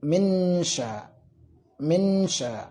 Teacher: jadi mulutnya mengucapkan nun, akan tetapi lidahnya sudah siap mengucapkan huruf shinnya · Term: berdengung